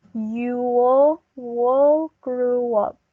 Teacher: we put a wah sound to link these two words